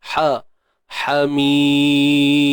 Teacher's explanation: Ha pedas. Tengah kerongkong.